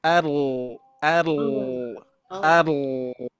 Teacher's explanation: Huruf ro itu menempel dari ujung lidah menempel ke ee gusi gigi seri atas. Ar ar dan tidak memonyokkan dua bibir ya.